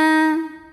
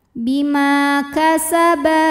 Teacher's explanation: Ma hukumnya adalah mad tabi'i dhahiri karena ada alif didahului harokat fathah, maka mim panjang 2 harokat.